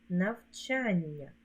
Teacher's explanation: дві букви л а звук один ль він подовжений м'який навчання дві букви н позначають один звук Ні він подовжений м'який